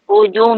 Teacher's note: Ru tebal, muncum, bari dhammah.